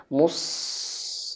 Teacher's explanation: shadnya dialirkan anginnya mus dan tebal